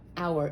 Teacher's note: even though it starts with an h it's not pronounced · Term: the h is silent